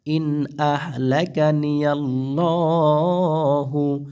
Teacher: নুন সাকিনের পরে হামজা এখানে গুন্না করা যাবে না ঠিক আছে নুন সাকিনের পর হামজা আসছে সে ইজ হার হবে